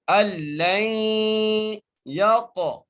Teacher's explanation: کیونکہ یا کے اوپر تشدید آ گئی ہے، اس لیے ہم کیا کریں گے، لام کو یا سے ملائیں گے اور غنہ بھی کریں گے. اللی یق، قاف کے اوپر قلقلہ کریں گے، قاف کو موٹا بھی کریں گے